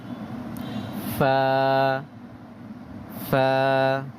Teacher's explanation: নিচের ঠোঁটের পেট সামনের উপরের দুই দাঁতের আগার সাথে লাগিয়ে